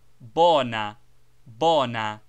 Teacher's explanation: not diphthongized but pronounced purely and rather shortly as bona bona not bona quite without the short oo sound